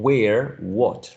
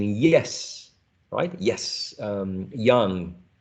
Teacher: there's still room for the airflow to leave without causing friction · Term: approximant